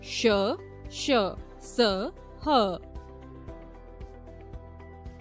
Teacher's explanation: इन वर्णों के उच्चारण के समय हवा के रगड़ खाने से मुख में गर्मी ऊष्मा उत्पन्न होती है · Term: ऊष्म व्यंजन